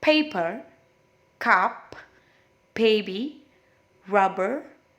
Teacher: dia melibatkan hanya bibirnya saja bibir atas dengan bibir bawah